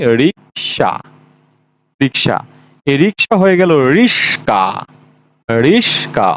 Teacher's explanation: ক এর জায়গাতে স গেল স এর জায়গাতে ক গেল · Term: ধ্বনি বিপর্যয়